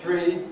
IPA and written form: θriː (three)